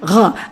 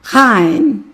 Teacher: რომელსაც ხშირად გამოთქვავენ ხოლმე, როგორც აინ, მაგრამ მას წინ ჰქონდა თანხმოვანი, რომელიც იყო დაახლოებით გამოითქმდა, როგორც ქართული ველარური მჟღერი ფრიკატივი . ეს არის ღ. ამიტომ იგი გამოითქმის, როგორც ღაენ და თუ